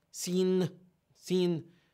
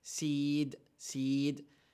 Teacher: The I is nasalized.